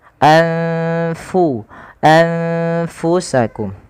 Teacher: makhrajnya adalah di bibir kita yang mana dia tidak merapat sekali antara bibir bawah dan atas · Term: makhraj huruf Fa